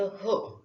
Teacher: कंठद्वार हे ज्याचं उच्चारण स्थान आहे त्याला कंठद्वारीय व्यंजन असं म्हणतात. स्वरतंत्रीतून ज्याचा उच्चार होतो त्याला कंठद्वारीय व्यंजन असंही म्हणतात.